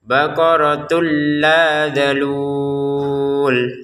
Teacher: Baqaratul la dimasukkan, jadi yang awalnya terbaca baqaratun sekarang baqaratul tanpa dengungan ya. Tidak boleh ada dengungan, langsung saja baqaratul la dalul.